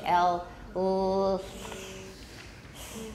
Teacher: Pulmonic, aggressive, voiceless, laminal, alveolar, lateral, oral